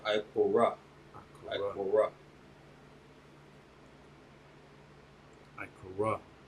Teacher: When it ends with a ha and the vowel sound drops off, that ha sound is damn near silent. You're pretty much just going to add a breath at the end of the word.